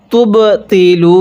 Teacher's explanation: এই বাটা আমরা ধাক্কা দিয়ে পড়ব, কারণ কলকলার হরফগুলো একটু ধাক্কা দিয়ে পড়তে হয়। বাটি হলো কলকলার হরফ।